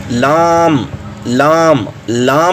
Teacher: हैं दवा हैक तो यह दवा हैक से लेकर सनाया तक जो दांत है इनके मसूड़ों पर यह जुबान की तरफ लगेगी जुबान का यह किनारा लगेगा तो उस वक्त लाम अदा होगा · آپ جب ادا کریں گے تو آپ کو پتہ چلے گا، آپ پڑھیں لام لام لام، جب آپ کریں گے تو آپ کی زبان کی جو طرف ہے وہ ثنایا سے دواحق تک کے جو مقابل کے مسوڑے ہیں وہاں پہ لگے گی